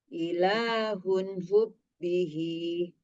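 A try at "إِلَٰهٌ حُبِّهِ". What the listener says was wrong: Nah, ketika nyambung, ketika nyambung, an-nya agak ada delay sedikit ya, jadi mengalir. Ilahun hubbihi.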